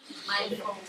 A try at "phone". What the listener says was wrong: Est-ce qu'il y a un N à la fin?